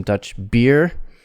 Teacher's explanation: main stress on beer long vowel